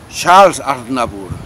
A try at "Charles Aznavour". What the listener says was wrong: La S no se pronuncia.